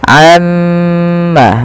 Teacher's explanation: kita harus menahan bunyi suara mim yang berharokat tasydid karena dia termasuk daripada bacaan gunnah. Nah, ini jangan kita langsung baca amma yatasaalun, tapi tahan dahulu gunnahnya atau bunyi suara mimnya sepanjang 2 harokat.